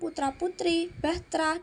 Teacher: pada kata putra-putri dan bahtra diselipkan bunyi e pepet antara TR